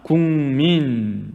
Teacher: 기역에 해당하는 소리가 이응에 해당하는 소리로 바뀌었습니다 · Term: 비음화